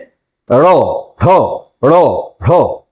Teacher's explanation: জিহ্বার অগ্রভাগ ওপরের দিকে ওঠে, সামনের তালুকে স্পর্শ করে, একবারে স্পর্শ করবে, গোল হয়ে সে স্পর্শ করবে, এবং তখন ওই ধ্বনিবাহী বায়ু জিহ্বাকে তাড়িয়ে দেবে। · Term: তারিত ধ্বনি, তাড়িত ধ্বনি